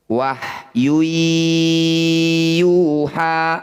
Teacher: Bunyi dhammah tanwinnya masukkan pada ya, dengungkan dua harokat. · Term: idgham bi gunnah